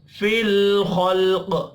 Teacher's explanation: फिल लाम साकिन पर कलकला नहीं करना